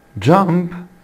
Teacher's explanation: بعد ال p sound اللي هي البي for pin حبايبي ال e دي بتنطق t sound